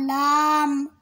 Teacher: 8 নম্বর মাখরাজ জিহ্বার আগার কিনারা সামনের উপরের দাঁতের মাড়ির সঙ্গে লাগাইয়া লাম